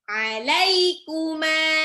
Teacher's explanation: Lam huruf yang berharokat fathah ketemu ya sukun, jadi kayak ai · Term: sifat lin